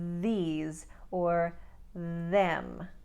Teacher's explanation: did you hear how I was vocalizing when I made those th sounds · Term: voice th sound